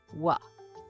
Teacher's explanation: round your lips and produce a voiced labio approximate · The W is a voiced labiovelar approximant, produced by rounding the lips and bringing the back of the tongue close to the velum. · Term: w sound